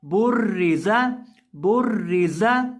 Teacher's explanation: जा को हम हमेशा सीटी निकाल कर पढ़ते हैं, तो इसके अंदर सीटी की आवाज पैदा करके इसको पढ़ेंगे।